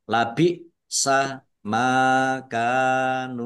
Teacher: Masing-masing dibaca panjang dua harokat. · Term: mat tabi'i